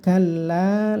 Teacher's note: kalla, lamnya ditasdid, ini ditekan ya lamnya, terus panjangkan bunyinya sekitar 2,5 alif